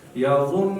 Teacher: یظن ورې پزه کې اواز راوځي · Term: غنه